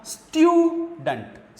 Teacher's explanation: स्ट्यू पर ये एक सिलेबल है स्ट्यू और दूसरा सिलेबल है डंट, तो इस पे आपका स्ट्रेस नहीं रहेगा, आगे वाले सिलेबल पे आपका स्ट्रेस रहेगा